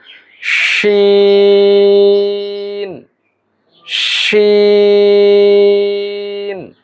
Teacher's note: জিহ্বার মধ্যখান, জিহ্বার মাঝখান তালুর সঙ্গে লাগিয়ে এর উচ্চারণ করতে হবে।